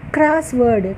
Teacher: క్రాస్ అనే దగ్గర మనం కొంత ఒత్తుతున్నాం, వర్డ్ అనేది తేలిగ్గా పలుకుతున్నాం, క్రాస్ వర్డ్. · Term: ప్రైమరీ స్ట్రెస్